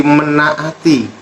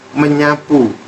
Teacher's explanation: nasalisasi konsonan yang tidak bersuara atau bisa dikatakan meluluh hilang